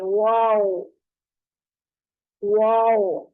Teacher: वाव को होंठों को मुकम्मल गोल करने पे वाव अदा होगा। ठीक है, होंठों को गोल करके, ना कहीं दांत टच होगा ना होंठ आपस में टकराएंगे।